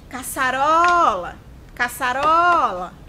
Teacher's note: Perceberam que o ró é a sílaba que ficou mais prolongada? Então, ela é a sílaba tônica.